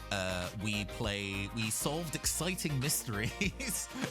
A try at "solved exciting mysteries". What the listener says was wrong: I don't think you put enough stress on exciting. The box clearly put that in like 6 point larger than solve and mysteries.